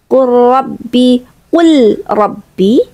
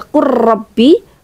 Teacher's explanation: Qurrabbi bukan, tapi qul rabbi. Seakan-akan lamnya itu tetap terbaca tapi kita langsung masuk ke huruf berikutnya.